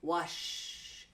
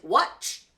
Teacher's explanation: when you see that SH sound it's going to be nice and slow when you see that CH sound it's quick